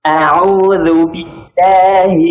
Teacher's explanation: Untuk huruf hamzah ya, pada kata a'udzu, baik, jangan terlalu tipis sehingga jadi imalah ya. Jadinya begitu, harusnya a biasa saja.